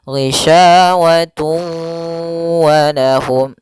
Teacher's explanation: tanwinnya dimasukkan ke huruf waw kemudian ditahan. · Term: idgham